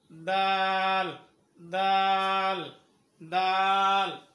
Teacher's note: তারপরে দাল, দাল, দাল, দাল, জোরে বলো দাল, একসাথে দাল। দাল হরফ উচ্চারণ করার সময় জিহ্বার আগাটা উপরে দাঁতের মাঝামাঝি লাগাইতে হবে।